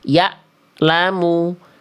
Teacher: suaranya terputus. Tidak mengalir sama sekali kalau hamzah.